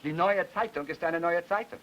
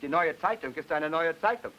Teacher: He puts secondary stress to make the compound and tertiary stress to make the adjective.